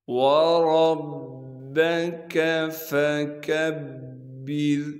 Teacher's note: فا کو بغیر کھینچے پڑھیں گے، اسی طرح سے اس کاف کو بھی باریک کر کے پڑھیں گے اور کاف کو آگے با سے ملائیں گے کیونکہ با پر تشدید ہے، تشدید ہونے کی وجہ سے تھوڑا سا ٹھہراؤ رکھیں گے۔ را کو باریک کر کے پڑھیں گے کیونکہ را سے پہلے زیر ہے